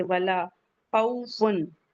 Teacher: लाम के बाद का अलिफ मद्दा है, टू काउंट पढ़ेंगे। वला खौफुन वाव लीन है, नरमी से पढ़ेंगे